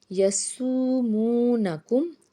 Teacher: واو ساکن سے پیچھے پیش ہے تو 1 1 الف کے برابر اس کو ہم کھینچ کے ادا کریں گے